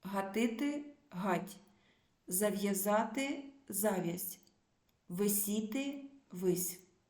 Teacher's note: пом'якшення кінцевого приголосного основи